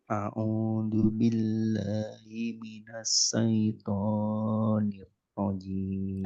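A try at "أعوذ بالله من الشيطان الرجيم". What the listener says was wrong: Nah, taunya hati-hati kepanjangan. Syaitonir rajim.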